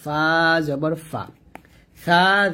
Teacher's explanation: ফাটা উপরে দাত নিচে ঠোটের সাথে লাগিয়ে উচ্চারণ করব